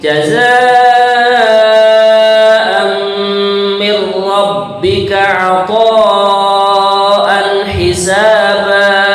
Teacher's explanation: Ini kalau dalam bahasa tajwidnya namanya idgham bila gunnah. Tidak ada mendenggungnya, tapi langsung seakan-akan ro bertasydidnya. Jadi bunyinya begini: jazaa'an mir rabbika 'ata'an hisaba.